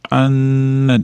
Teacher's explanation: tashdidli nun kelganligi uchun g'unna bo'lyapti, ushlab turamiz.